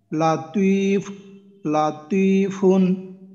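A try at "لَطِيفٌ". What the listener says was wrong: মাশাআল্লাহ, তি আরো একটু টান দেবো আমরা, লাতিফুন, হ্যাঁ লাতিফুন, হ্যাঁ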